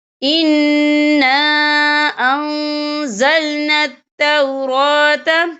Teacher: یہاں نون مشدد ہے تو یہاں پر غنہ ہوگا، اور یہاں دیکھیں خالف سے پہلے زبر بھی ہے اور اس پر چھوٹی سی مد بھی ہے، تو ہم یہاں 2 یا 3 حرکت کے برابر کھینچ کے پڑھیں گے۔